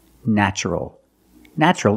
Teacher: the first syllable is pronounced with a short a like black cat